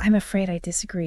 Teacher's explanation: The pitch starts mid-level and then just drops sharply at the end of the sentence. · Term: falling pitch